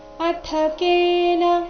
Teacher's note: ಅಥ ಇಲ್ಲಿ ಥ ಮಹಾಪ್ರಾಣ ರಸ್ವ